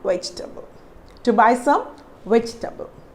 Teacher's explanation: we are not here pronouncing the letter e